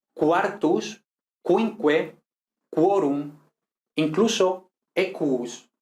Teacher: en latín sí pronunciamos la U de la siguiente vocal, que puede ser cualquiera